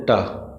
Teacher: मूर्धा मतलब जीभ का टेढ़ा करके बोलना पीछे पीछे पलट जाए जीभ ट एक बार बोल देंगे ट तो जीभ पूरी टेढ़ी हो जाए उसे बोलेंगे मूर्धा या मूर्धन्य।